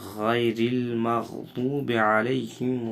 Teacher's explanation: غین موٹا ہے اور را باریک ہے. المغضوب کا غین اور ضاد دونوں ہمیشہ موٹے پڑھے جانے حرف میں سے ہے.